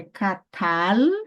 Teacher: o som da consoante lama é de L, jamais som de U, tá bom? Não é catal, catal não, filho, não vem para cá portuguesar de jeito, não.